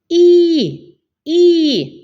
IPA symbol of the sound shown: і